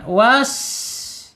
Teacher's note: Gigi seri yang bawah ya. Sin ini mempunyai sifat hames. Keluar ya anginnya ketika ee diucapkan